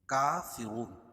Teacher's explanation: ایہا الکافرون، ہا کو لام میں ملائیں گے اور اس کے بعد حروف قمری کے 14 حرفوں میں سے کاف ہے یا لام پڑھی جا رہی ہے۔ کافرون، کاف پر کھڑا زبر قائم مقام الف مدہ کہ اس کو ایک الف کے برابر کھینچ کے پڑھیں گے۔ رون، واو ساکن سے پہلے پیش ہو تو وہ مدہ، اور را کے اوپر پیش ہے، را پر زبر یا پیش ہو تو را پوری ہوتی ہے، اس کو موٹا پڑھا جاتا ہے۔